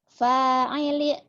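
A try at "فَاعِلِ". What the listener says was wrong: Fa'ili kok jadi saili? Fa'ili. Iya, fa'ili ini bukan jadi saili.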